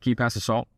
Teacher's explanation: When you uptalk, it sounds like you're asking a question. When you go down, it sounds like you're making a firm statement. · So when you end on a lower note, it sounds more serious.